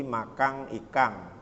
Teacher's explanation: Orang yang tinggalnya di Sulawesi Selatan ya begitu lingkungannya. Sehingga kalau dia mengucapkan N itu menjadi sengau ya